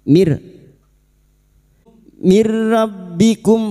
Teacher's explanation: nun sukun bertemu ro idgham bila gunah masuk tanpa mendengung. Nun sukun masuk pada huruf rohunya nun sukun atau tanwin dengan dua huruf ini, yaitu huruf lam dan huruf ro.